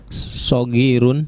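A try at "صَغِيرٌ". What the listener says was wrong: Itu titik ya, jadi intonasinya nggak usah naik. Nggak usah naik. Muhammadun lahu ibnun saghirun, titik ya. Iya, saghirun.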